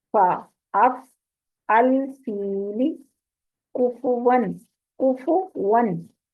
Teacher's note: निचले होंठ के गीले हिस्से को ऊपर के दो दांतों के किनारे लगाकर इसको अदा किया जाता है फा, यानी ऊपर वाले दांत नीचे वाले होंठ पर लगेंगे, उसके अंदर वाले गीले हिस्से को।